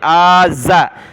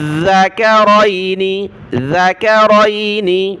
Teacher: ذال پر زبان نکالیں، اس کو زا نہ پڑھیں، آزا، زا نہیں، ذال ہے۔